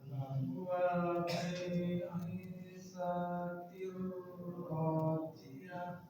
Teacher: Rohnya tebalkan. Karena roh bertasydid berfathah maka dia wajib tafkhim tebal.